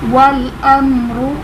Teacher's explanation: میم ساکن کے بعد با اور میم کے علاوہ حرف ہے تو یہاں پر اظہار شفوی ہوگا، یعنی غنہ نہیں کریں گے